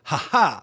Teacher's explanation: I'm putting the emphasis on the second syllable